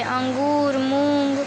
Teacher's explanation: इसका उच्चारण म तथा न के समान होता है। यानी कि अनुस्वार का उच्चारण म अथवा न के समान में होता है